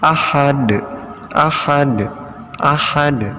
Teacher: Jadi dalnya dipantulkan ya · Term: qalqalah